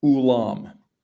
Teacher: The difference is between how heavy is the glottal stop at the beginning of the word